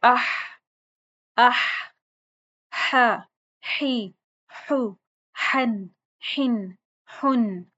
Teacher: इसको आपने वस्ते हलक से पढ़ना है, दरमियाने गले के हिस्से से